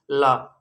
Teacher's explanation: पारसिव ध्वनि वह ध्वनियां होती है जो जीभ के किनारे से निकलती हैं। जैसे हम ल का जब उच्चारण करेंगे ल तो ये जीभ के किनारे से निकलता है। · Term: पार्श्विक ध्वनि